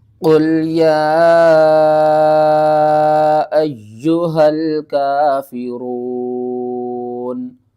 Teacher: قاف کو پر پڑھنا ہے اور قاف کو لام کے ساتھ ملا کر پڑھنا ہے